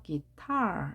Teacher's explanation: 기타 강세가 뒤에 있습니다